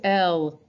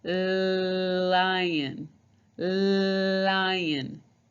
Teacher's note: my tongue is behind my teeth at the top of my mouth on top